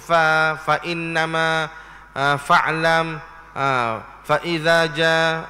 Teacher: Dan makhraj fa itu daripada dalam dua bibir mulut yang di bawah. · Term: huruf fa